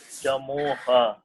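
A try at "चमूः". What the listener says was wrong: Not ha, chamuhu. Remember in the beginning itself I told Visarga will take the sound of the vowel. Oo is there. Therefore, oohu, chamuhu.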